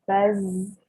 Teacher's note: a voiceless consonant meanwhile at the end of the word because you can feel the vibration because z is a voiced consonant